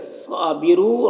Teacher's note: را کو پر پڑھیں گے اور یہاں پر واو مدہ ہے